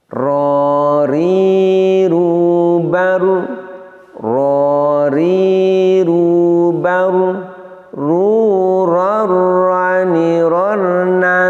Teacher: Huruf ro ini punya sifat diantaranya adalah takrir, yaitu bergetarnya ujung lidah, namun dengan getaran yang pendek dan getaran yang lembut. Kemudian dari segi nafas, sama pula dengan nun, ro ini diucapkan dengan nafas yang tidak mengalir. · Kemudian dari segi nafas, sama pula dengan nun, ro ini diucapkan dengan nafas yang tidak mengalir. Ro ini sifatnya jahar. Kemudian dari segi mudah atau sulit, juga sama dengan nun, huruf ro ini sifatnya adalah idlaq. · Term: taqrir